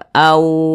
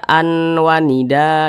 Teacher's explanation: cara bacanya itu dimasukkan kemudian juga didengungkan Apanya yang dimasukkan jadi bunyi tanwin ini dimasukkan atau dileburkan ee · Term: idgham bhunnah